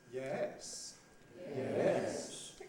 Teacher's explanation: Starts in the middle, goes up and down. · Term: rise, rise fall